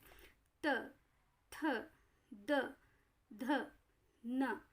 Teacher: वो दांत के पास से टच कर रही है आपकी जबान, और उसको वहाँ से हवा निकल रही है। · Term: दंत व्यंजन